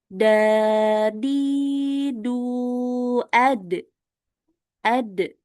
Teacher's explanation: untuk huruf dal ini juga enggak boleh keluar angin ya, karena masih banyak ee yang membaca huruf dal itu keluar angin.